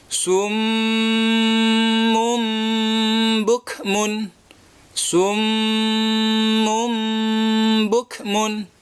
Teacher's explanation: suara Nun berubah menjadi suara mim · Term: iqlab, iklab